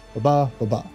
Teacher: two syllables unstressed stressed